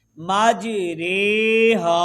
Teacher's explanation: امالہ کی رے کو اردو کے قطرے، لفظ قطرے کی را کی طرح پڑھیں، یعنی ری نہیں بلکہ رے پڑھیں · زبر کو زیر کی طرف اور الف کو یا کی طرف مائل کر کے پڑھنے کو امالہ کہتے ہیں